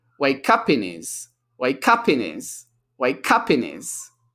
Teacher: And because up ends in a P consonant sound, in starts with an I, the P links with in, okay? And because the H in his has reduced, the N from in links to the next word